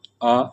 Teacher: आ एक पश्च स्वर है।